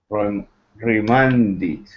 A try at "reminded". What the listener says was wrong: Yeah, not it re, but r.